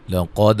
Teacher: قاف کو موٹا ادا کریں گے، دال پہ قلقلہ ہے